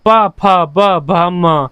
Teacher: होठ आपस में आपके लगते हैं। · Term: ओष्ठ्य व्यंजन